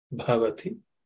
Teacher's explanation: This Bha is aspirated because it's the fourth letter in the Pavarga.